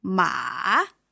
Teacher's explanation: And the third tone is going down and up.